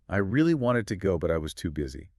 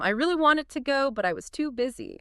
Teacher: You hear how wanted and too busy pop out. Those are the core ideas, so they carry the stress. Right. The little words like really, too, but I was get minimized. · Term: natural rhythm